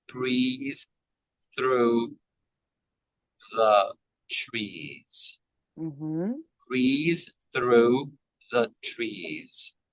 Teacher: through is unvoiced the is voiced